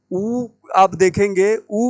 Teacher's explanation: ऊ बोलने में हमारे जो होठ है ना वो गोल हो जाते हैं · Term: ओष्ठ वर्ण